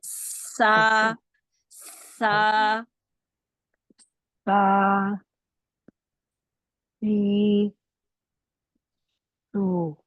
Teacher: सा जुबान को ना नीचे वाले सी दांतों के करीब रखिए, नीचे जी वाले दांतों सीधी। सा सा देखिए मेरी सीटी उस वर्ड के लेटर के अदा होने से पहले सीटी मेरी सुनाई दे रही है